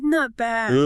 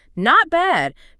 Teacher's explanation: If you want to say you're good, keep it high. Not bad. Do not drag it out unless you want people to worry about you or think you are rude. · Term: high tone